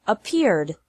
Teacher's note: The third pronunciation of Ed is like D with no extra syllable. Ed is pronounced like D after all other verbs that don't fit in the first or second categories.